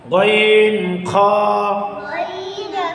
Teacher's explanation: তিন নাম্বার মাখরাজ হলকের শেষ হইতে